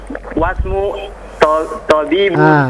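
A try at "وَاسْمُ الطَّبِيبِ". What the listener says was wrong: disambung. Wasmut, disambung dengan ta-nya. Wasmut.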